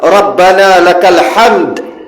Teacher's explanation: Tapi kalau dal Rabbana lakal hamd, dia kubra. Jadi dia separuh harakat.